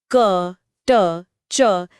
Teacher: क, ट, च जैसी ध्वनियां अघोष होती हैं। इन्हें बोलते समय गले में कोई कंपन नहीं होता, बस झटके से हवा बाहर आती है। मतलब ये बहुत कठोर ध्वनियां हैं।